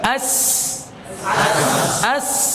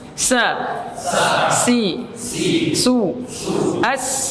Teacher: Ya, sifat-sifatnya ya hampir sama, akan tapi huruf sin dia sifatnya hams, jadi lebih tajam lagi